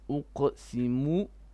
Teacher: stop the mu, don't stretch it any further, it's only short vowel